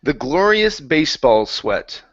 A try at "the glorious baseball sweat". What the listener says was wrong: Almost. Watch that R. The glorious baseball sweat.